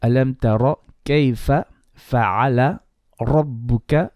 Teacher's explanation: So ra here is going to be heavy